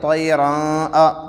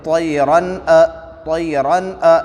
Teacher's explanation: ناک میں آواز نہیں گئی تو یہ پڑھنا صحیح ہے، اس کو اظہار کہتے ہیں